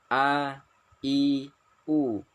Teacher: Ya, tenggorokan ini harus plong. A, I, U, tidak boleh sengau. Kalau sengau dia bergeser ke huruf ain. A, I, U harus jelas. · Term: huruf hamzah